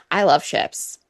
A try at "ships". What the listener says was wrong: It sounded like you said shifts.